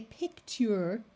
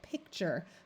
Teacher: a long u after the letter T tends to change the sound of the T to more like a CH